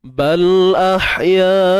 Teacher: Mat asli jumpa hamzah dalam satu perkataan, so kita kena panjang 4 atau 5 harakat. Hukumnya mat wajib muttasil.